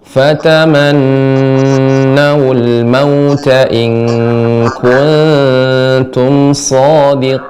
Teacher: kemudian nun yang bertasydid juga kurang dipanjangkan, Ibu. Panjangkan sedikit lagi gunahnya.